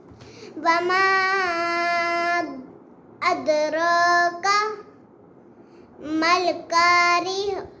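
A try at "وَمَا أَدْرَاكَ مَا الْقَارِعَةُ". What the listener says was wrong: قاف کو موٹا کرو نا.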